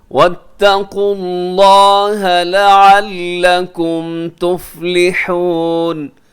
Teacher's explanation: یہاں واتقوا اللہ لفظ اللہ کو موٹا رکھیے گا کیونکہ اس سے پہلے قاف کے اوپر پیش ہے۔